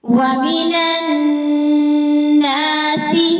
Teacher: نون کے اوپر غنہ ہے، غنہ پہ ٹائم دیں گے، اور غنہ کے ساتھ الف بھی ہے۔ وَمِنَ النَّاسِ، نون کو نون کے اندر مرج کرنا ہے۔